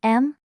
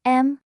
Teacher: Imagine singing 4 little notes. The first is high and flat